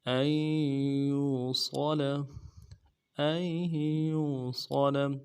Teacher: ان یوصل، یو یا کو واو کے ساتھ ملانا ہے، واو مدہ ہے، ایک الف دال میں کھینچیں گے، صاد کو موٹا ادا کریں گے، لام کو نرم سے ادا کریں گے